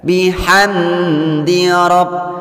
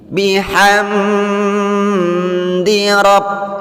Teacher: Perhatikan ada mim sukun di sini yang berhadapan atau yang bertemu dengan huruf dal. Maka membacanya dibaca dengan izhar syafawi. Tidak boleh mendengung dan tidak boleh dipanjangkan.